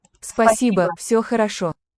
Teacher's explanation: Also in Спасибо. the final syllable is a schwa.